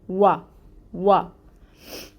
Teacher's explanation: वा पे अपने होंठों को बिल्कुल गोल करेंगे और इसके ऊपर ज़बर की हरकत है। एक हरकत है इसलिए इसको 1 काउंट पढ़ा जाएगा। · इसके लिए मुंह को फतहा अदा करने के लिए जो ज़बर की हरकत है वो अदा करने के लिए होंठ खुलेंगे। वा वाओ पहले होंठ गोल करें फिर ऊपर की तरफ खोलें ज़बर अदा करने के लिए